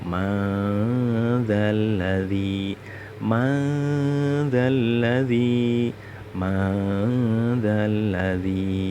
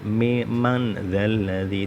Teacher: Nun sukun bertemu zal. Setiap ada nun sukun bertemu zal itu namanya bacaan ikhfa hakiki dan bacaannya harus dengung.